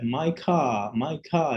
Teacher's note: É claro que o americano fala car, essa expressão que a gente está usando aqui é a variante, é a variedade norte-americana, né, do inglês americano, mas o britânico, por exemplo, ele não fala, ele só vai alongar, como ele não fala o R